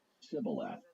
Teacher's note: So it would be pronounced chival. But in Ephraim, they didn't say the word with the aspirated initial sound. And so they just used an s sound and said it civil.